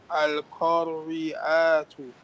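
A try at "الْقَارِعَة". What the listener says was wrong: No, it changes into ha.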